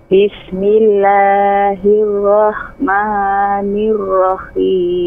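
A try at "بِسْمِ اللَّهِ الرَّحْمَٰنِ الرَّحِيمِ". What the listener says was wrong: Nir-Rahim. Haknya tidak tasydid.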